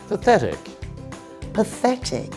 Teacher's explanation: The tricky thing here is the 'th' sound. Yes, it’s not a /t/ sound.